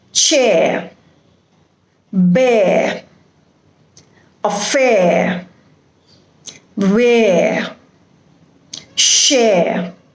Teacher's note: usually you will see that the last letter r is not pronounced in these type of words you don't say chair or fair or share but you have